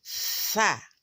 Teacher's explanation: ujung lidah kita tempelkan pada dua gigi seri atas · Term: tsa